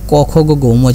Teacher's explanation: তো আমরা যদি খেয়াল করে দেখি ক খ গ ঘ ম যেটা, এটাকে আমরা বলছি কণ্ঠ বা জিহ্বা, মানে জিহ্বামূল থেকে উৎপন্ন হয়। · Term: কণ্ঠ বা জিহ্বামূলীয়